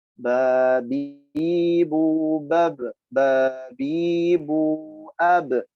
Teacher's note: Sifat khususnya qalqalah, mantul. ya, atau bunyi pantulan ketika dianya berharokat sukun, baik sukun asli atau sukun yang arid.